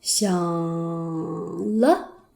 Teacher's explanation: 因为第三声是最低的声音，不能更低了，所以要上来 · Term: 轻声